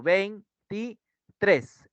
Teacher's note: en tres recae la mayor intensidad